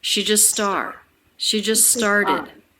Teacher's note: she and just low in pitch flatter compared to star